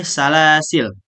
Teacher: wakaf pada lam yang mati bukan pada alif setelahnya, yakni salasil.